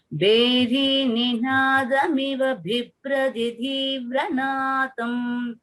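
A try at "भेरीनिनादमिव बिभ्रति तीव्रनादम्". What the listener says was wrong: The Mahapranas everywhere have to be corrected. Bheri Ninadamiva Bibhrati Tivranadam Sheshadrishekara Vibho Tava Suprabhatam. Everywhere, each and every Mahaprana should be clear.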